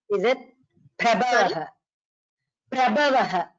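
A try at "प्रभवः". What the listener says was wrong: Prabhavaha, yes, the bha should be, the mahaprana should be heard more clearly. It will come with practice.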